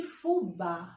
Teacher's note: são oxítonas por quê porque a sílaba tônica a sílaba forte é a última